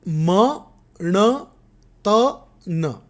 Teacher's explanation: મ ણ અને ન અનુનાસિક છે, જ્યારે ત અનુનાસિક નથી, એ રીતે એ બાકીનાથી જુદો પડે છે.